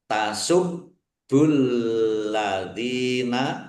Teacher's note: juga ada tasdidnya dibaca dobel ditekan biar tampak dobelnya